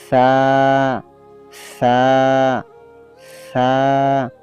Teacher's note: জিহ্বার আগা সামনের উপরে দুই দাঁতের আগার সঙ্গে লাগাইয়া।